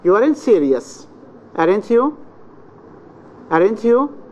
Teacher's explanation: You start high, then fall. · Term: rise, fall